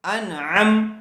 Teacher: بغیر غننے کے جلد اظہار کر کے پڑھیں گے، اس کو ان غننے کے ساتھ نہیں پڑھیں گے